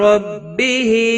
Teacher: ربہ رو زبر کی وجہ سے پر پڑھا جائے گا۔ ہا کے نیچے کھڑی زیر ہے، ایک الف کے برابر کھینچ کر پڑھیں گے۔